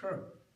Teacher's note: a retroflex sh, meaning a sha, with the tongue rolled, in a retroflex